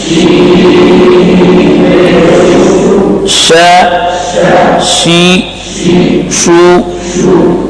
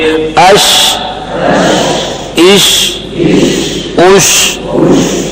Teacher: ایک تو اس میں رخوت ہے اور ایک تفشی ہے، تفشی کی وجہ سے آواز پھیل جائے گی۔